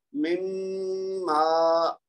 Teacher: میم کو پہلے غنہ کرنا ہے اور پھر دو حرکت لمبا کرنا ہے